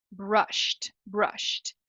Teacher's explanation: movimento no final essa transição pronúncia dela então vai ser brush o d se transformou num t